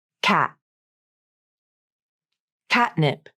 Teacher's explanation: Stop T without the tongue tip